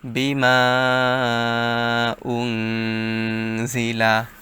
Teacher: নুন সাকিনের পর ইকফার হরফ যা আসছে তাই গুন্নার সহিত গোপন করে পড়তে হবে